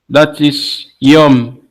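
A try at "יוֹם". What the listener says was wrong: perfect.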